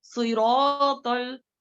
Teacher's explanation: होठों की हरकत ज्यादा होती है, लेकिन सौत को जो है अदा करते हुए होठों को ज्यादा गोल नहीं करना है, ज्यादा होठों को हरकत करने नहीं छोड़ना है